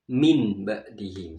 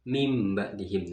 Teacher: mati atau tanwin itu dirubah menjadi huruf mim. Ya, contohnya mim ba'dihim, asalnya min ba'dihim.